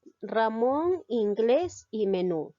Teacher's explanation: Ramón lleva la mayor fuerza de voz en la sílaba mon. Inglés en la sílaba gles. Menú en nu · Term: palabras agudas